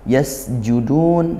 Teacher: Panjangnya satu alif. Yasjudun sin sukun dialirkan suaranya dan desiskan nafasnya · sin sukun dialirkan suaranya dan desiskan nafasnya. Judun, dun ini mad arid lis sukun, dibaca panjang boleh 1, 2 atau 3 alif, seperti itu.